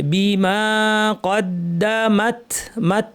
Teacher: এখানে তা শেষে ছোট্ট বাতাস বের হবে